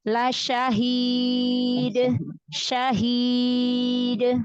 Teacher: Di akhir yang panjang-panjang matnya diusahakan lebih al-jauf, jangan ada terbagi ke hidung.